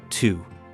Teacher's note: In Quebec, certain letters change sound completely before specific vowels. The letter T, before an U or I sound, doesn't stay a clean T. It turns into something closer to TS. So, a simple word like tu, meaning you, ends up sounding like tu. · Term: affrication